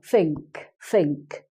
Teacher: a cockney person may not use the fur they will use an F sound or a V sound instead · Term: cockney accent